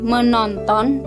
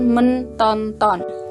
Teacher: Jadi fonem T berubah menjadi N. Dia menjadi menonton, bukan mentonton.